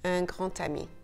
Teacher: the letter D sounds a little bit closer to a T